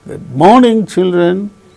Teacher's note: we can notice the falling tone occurring on the word morning